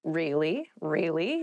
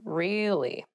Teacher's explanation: you're interested in a conversation with upward intonation